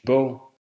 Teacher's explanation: In Danish, the final G is silent.